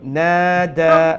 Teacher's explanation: there's alif madda after the noon. So you need to stretch it one alif long.